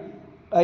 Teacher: ऐ हा स्वर आ अधिक ऱ्हस्व ई किंवा दीर्घ ई या 2 स्वरां मिळून तयार झालेला आहे. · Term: संयुक्त स्वर